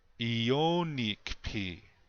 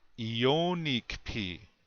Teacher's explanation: the accent is still on the second syllable